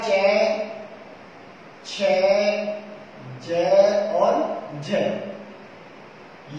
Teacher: पहले वाला भाग स्पर्शी हो तथा उच्चारण के बाद वाला भाग संघर्षी हो जाता हो, ऐसे व्यंजनों को स्पर्श संघर्षी व्यंजन कहा जाता है।